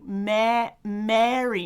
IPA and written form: mæri (marry)